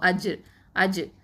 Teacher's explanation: கல்கலா எழுத்து சுக்கூன் பெற்று வந்திருக்கிறதுனால நம்ம என்ன பண்ணணும்? வந்து அசைச்சு ஓதணும். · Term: கல்கலத்து சுகரா